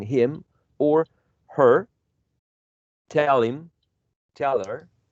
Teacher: we have elision or deletion, right, of the first consonant sound